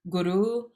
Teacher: word guru where you're moving through the two sounds very quickly short on the goo longer on the r